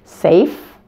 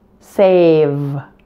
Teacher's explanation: same mouth position for F and V just turn on your voice here make sure your vocal cords are vibrating to pronounce the V